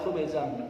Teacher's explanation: ini khubzan ada tanwin bertemu sin juga bacaan ifa harus dibaca samar